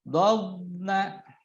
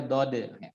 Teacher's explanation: huruf dot ketika sukun jangan sampai memantul ya. Dobna, tidak boleh dode.